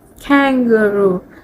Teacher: word kangaroo a Tami speaker might pronounce it as kangaroo which a noticeable emphasis on each syllable particularly the first one